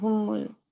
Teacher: Ha dari pangkal tenggorokan. Mim merapatkan dua bibir disertai dengan hunnah.